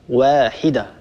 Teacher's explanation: الواو لا تفخمها العرب أبدا